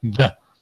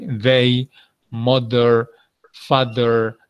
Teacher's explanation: el otro sonido que pones la lengua entre los dientes y vibras sacando ese sonido de la D